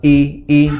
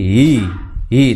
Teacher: i hamzah di pangkal tenggorokan, di kedua kita suara i jangan i jangan digeser jadi hi tapi i ya, bukan hi ya, itu digeser atau diseret suaranya jadi tapi di i ya.